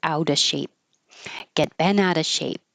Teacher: we don't have to pronounce the V in of. You can just skip it and say a shape.